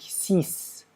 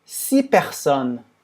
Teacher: como tem uma outra palavra depois, a gente não fala o s. A gente fala por 6 personnes, tá?